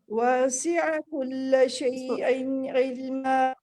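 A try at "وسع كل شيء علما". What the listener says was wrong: اس کو کھینچے نہیں، اس کو ایک حرکت کے ساتھ پڑھیے. واسع کل شیء علما.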